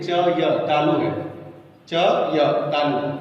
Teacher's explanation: य का उच्चारण स्थान देखिए, च य तालु है